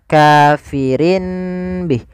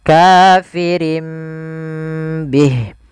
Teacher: Iqlab itu mengganti suara nun menjadi suara mim.